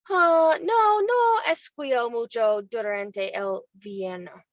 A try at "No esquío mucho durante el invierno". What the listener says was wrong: And esquiar is not pronounced with a we, it's an E. Esquío, no esquío.